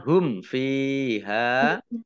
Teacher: Selanjutnya hum fiha mim sukun bertemu dengan huruf fa bacaan izhar syafawi dibaca jelas